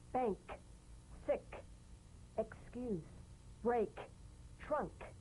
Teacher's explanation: The unvoiced tongue back plosive consonant. With the tongue in the G position, let the tongue spring away in the soft, unvoiced click of the K drum beat. Feel a crisp tap and a pulsation in the back of the tongue.